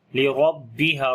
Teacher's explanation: را کو موٹا پڑھیں گے، اس کے اوپر زبر ہے، با کو تھوڑا سخت کر کے پڑھیں گے، شد کی وجہ سے تھوڑا رکیں گے بھی۔